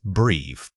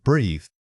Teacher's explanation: This is a unique sound because it uses the voiced th which requires your tongue to lightly touch behind your top teeth.